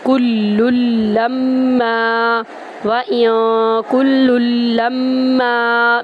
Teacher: ہم سختی دیں گے کاف کو لام میں داخل کرتے ہوئے، لام کو لام میں داخل کرتے ہوئے اور لام کو میم میں داخل کرتے ہوئے غنہ کریں گے